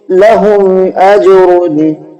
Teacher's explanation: میم ساکن کے بعد میں حمزہ ہے جس کی وجہ سے ہم نے میم ساکن کی آواز کو ظاہر کر کے پڑھا ہے